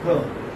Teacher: R is not pronounced, okay, curl.